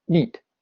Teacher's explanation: if you end it with a unvoiced consonant neat it will be quite short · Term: allophonic lengthening